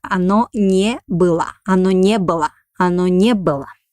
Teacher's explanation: We write O, but pronounce it like A because it doesn't have a stress.